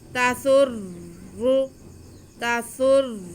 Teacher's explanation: سین کا پیش ہم را کے ساتھ ملا لیں گے. تسر، تسر، آگے را کا پیش ہم پھر نون کے ساتھ ملائیں گے کیونکہ نون بھی مشدد ہے.